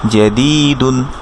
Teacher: কাসরার বামে ইয়া সাকিন থাকার কারণে দি এক আলিফ মাদ হবে। এটা ছিল দি, কিন্তু এটা আসার কারণে এটা হয়ে যাবে এক আলিফ মাদ।